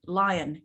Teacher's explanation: We make that second syllable weak, okay? Because the strong syllable is the I, the lie, yep? So we go lie on to remember it's an O, otherwise you might put a different vowel there.